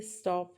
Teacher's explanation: लेकिन स्टॉप के केस में पफ नहीं बनता। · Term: अन एस्पिरेटेड